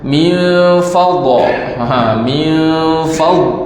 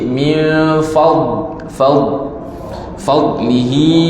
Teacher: Salah kalau kita baca min fadha, min fad, tidak ada qalqalah, tapi dia ada istitalah, suara tu lanjut sikit